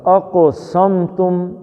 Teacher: قاف قلقلے کا ہے اور موٹا ہے